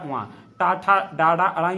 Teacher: मूर्धा से ट वर्ग आएगा